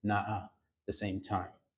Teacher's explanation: removing the t's out of that situation so that we wind up with na the same time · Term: elision